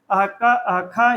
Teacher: जब भी पूछेगा अह क अह ख, यह क्या है, तो इसका नाम है जिह्वा मूलीय। और जिह्वा मूलीय मतलब जहां से जीभ शुरू होती है, जहां कंठ है, जिह्वा का मूल मतलब मूल स्थान, तो जिह्वा जहां से स्टार्ट हुई है वही जिह्वा मूली है, वहां से इसका उच्चारण होता है।